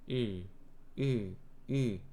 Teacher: 영어에서 약화됐을 때는 으. 입천장에 혀가 좀 가까이 가면서 양 옆에 있는 어금니에 혀 양 날개가 닿습니다.